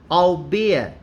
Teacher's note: i suppose you don't pronounce the last t